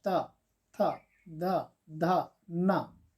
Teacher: हमारी जीभ है वो दांत के पीछे वाले भाग को टच करता है, त थ द ध न। तो इस तरह से इनको कहा जाता है त वर्ग के व्यंजन या दंत्य व्यंजन कहा जाता है।